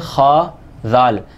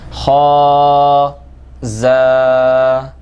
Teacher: ذال اور زا کا فرق کرنا لازمی ہے۔ ذال کے اندر سیٹی نہیں آتی، اس کا مخرج میں نے آپ کو بتایا تھا، اسی تلفظ کے ساتھ پڑھتے ہوئے انشاءاللہ العزیز اس کو آپ پڑھیں گے تو یہ آسانی سے آپ پہ ادا ہو جائے گا کہ آپ نے زبان کا کنارہ اوپر وردتوں کے کنارے پر لگانا ہے۔